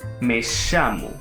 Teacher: In Argentina and Uruguay, the letters double L and Y are pronounced like the English sound sh, while in other countries it generally sounds like the English Y.